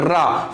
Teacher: रा को उच्चारण करते समय हमारी जो जीभ है वो लुढ़कती है 2-3 बार। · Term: लुंठित